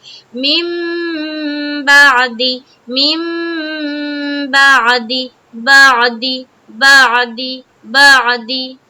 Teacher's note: تو عین کو کہاں سے نکالنا ہے؟ حلق سے نکالنا ہے